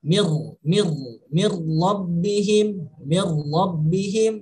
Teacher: seolah-olah bunyi nun mati dengan bunyi ra itu sudah bersatu. Mir bukan min ra tapi mir rabbihim, seolah-olah bunyi nun mati sudah bersatu dengan bunyi ra. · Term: idgham bila gunnah